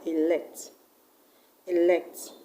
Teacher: is an action word, so it's a verb. That's why the stress will go to the second syllable.